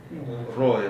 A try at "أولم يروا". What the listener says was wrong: Ra ditebalkan lagi.